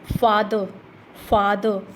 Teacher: ठीक है, जैसे कि word with stress on द first syllable, first syllable पर जिसके स्ट्रेस आता है, जैसे कि फादर, फादर, फा को लाउडर बोल रहे हैं, लॉन्गर भी बोल रहे हैं, तो इसके फर्स्ट जो सिलेबल पर स्ट्रेस लगेगा।